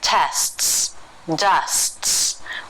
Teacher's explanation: like tests dusts we use a stop t this means that after the first s will very quickly stop the airflow for a moment and then release right back into the second s when this happens very quickly it can be difficult to hear